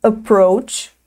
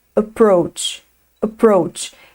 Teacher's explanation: Só que é um A bem curtinho e bem baixinho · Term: schwa